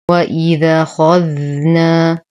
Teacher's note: الذال حرف لثوي نعطيه الرخاوة